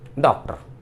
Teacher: एक ध्वनि यह है आ और ओ के बीच की ओ, इसको आगत ध्वनि कहते हैं। आगत ध्वनि, आगत ध्वनि का मतलब है जो दूसरी भाषा से हमारी हिंदी भाषा में आई है या अंग्रेजी से आई है हमारी भाषा में।